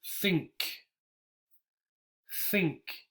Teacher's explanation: you should feel almost no vibration think think what you do feel air